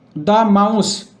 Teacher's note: মাউস মা ম দিয়ে উচ্চারণ শুরু হচ্ছে, তাই যেহেতু ম একটা কনসোনেন্ট সাউন্ড হয়, তাই এর আগের দাকে দা বলবো